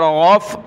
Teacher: غین فا زبر غف، غین کو گلے سے نکالا، اس کی جگہ آپ نے گاف نہیں پڑھنا، غین پڑھنا ہے